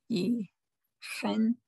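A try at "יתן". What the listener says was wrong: No, look at that's a tav. 2 dots. Tain.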